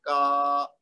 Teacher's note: کاف کے زبر کے بعد اگر الف جڑا ہوا ہے تو پھر ہم نے پڑھنا ہے کا, اس کو ڈبل کر دینا, یعنی کھینچتے ہوئے لمبا کر دینا ہے. آگے ہے میم, تو میم کے اوپر خالی زبر ہے, تو اس کو ہم نے ایک حرکت دینی ہے, میم زبر ما. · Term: مد